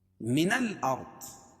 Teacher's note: را ساکن سے پہلے زبر ہے تو را کو پر پڑھیں گے اور ضاد کو موٹا پڑھیں گے